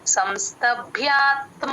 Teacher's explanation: భ కి మహా ప్రాణము య వత్తు రెండు వినపడేటట్టు చెప్పాలి